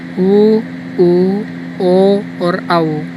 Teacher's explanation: वे स्वर जिनके उच्चारण में होठ वृत्त के समान गोल हो जाते हैं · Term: वृत्ताकार स्वर